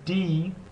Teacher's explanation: the English d uh in English when you say d uh notice that your tongue is on the roof of your mouth just behind your upper front teeth